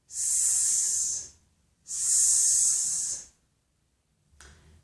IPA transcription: s